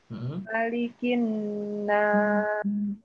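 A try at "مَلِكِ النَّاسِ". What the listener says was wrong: Lamakan lagi nunnya. Malikin nas.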